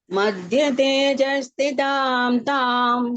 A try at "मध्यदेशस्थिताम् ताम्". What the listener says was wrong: தேஜம் தேஜஸ் இல்லது தேச.